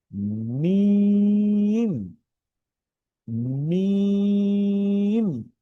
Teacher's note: মিমের ক্ষেত্রে আমরা একটু দুই ঠোঁট চাপ দিয়ে মিম, মিম।